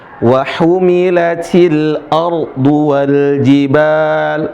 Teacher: Kalau di sini tebal, ra sukun sebelumnya fathah.